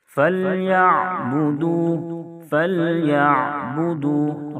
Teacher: عین ادا کرتے ہوئے آواز کو جاری رکھیں گے، بعض مرتبہ عین کی ادائیگی میں آواز جھٹکے سے رک جاتی ہے، جس کی وجہ سے عین حمزہ سے بدل جاتا ہے۔